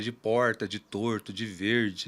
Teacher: Normalmente as pessoas identificam com aquele R que tecnicamente a gente chama de retroflexo, mas é o R caipira